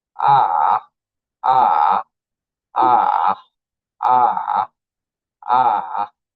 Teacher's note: third tone pronunciation will be falling and rising. falling and rising dips down then rises.